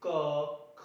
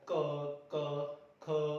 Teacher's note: हमारे जो कोमल तालु, एक बार आप प्रैक्टिकल करके देखिए, हमारा जो कोमल तालु है, ये जब हम लाइन उच्चारण करेंगे, इस लाइन का इसको उच्चारित करेंगे क, ख, तो हमारा जो जीभ का जो पीछे वाला हिस्सा है वह हमारा जो कोमल तालु है वहां पर स्पर्श करेगा बार बार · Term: कोमल तालव्य व्यंजन